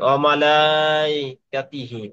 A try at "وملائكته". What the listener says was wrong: ওমালাই হবে না, ওমালাই হবে না, আপনি ওমালাই বলে ফেলেন। ওমালা ইকাতিহি। ওমালা ইকাতিহি।